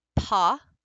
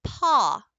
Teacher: So if you say that, paw, paw, If you listen carefully, can you hear the slight difference between that short O, ah, and that back resonating ah, almost the yawn?